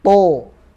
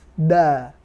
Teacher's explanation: Kalau to dia sama kayak dal, dalam artian tidak ada hamznya, tapi to dia tebel, to. Kalau da tipis, da, to, seperti itu.